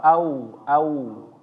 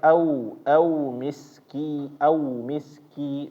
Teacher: Nah, lebih dekat ke u. Jangan ke o. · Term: wau ketika sukun